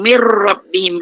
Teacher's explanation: Non mati jumpa ra. Bila gunnah, masuk tapi tidak dengung.